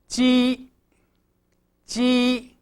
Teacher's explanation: The middle part of your tongue is touching the palate. The tip is relaxed and not making contact with the top of the mouth. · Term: palatal initials